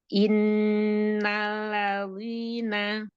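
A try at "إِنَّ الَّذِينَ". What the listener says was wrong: Nah, wina jangan tebal-tebal zalnya. Zina.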